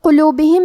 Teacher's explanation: قاف کو ہم زبان کی جڑ اور تالو کے نرم حصے سے پڑھیں گے